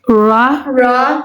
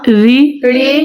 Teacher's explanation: را کے نیچے زیر ہے تو را کو باریک پڑھیں گے